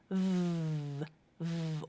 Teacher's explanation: voiced consonants where the vocal cords are vibrating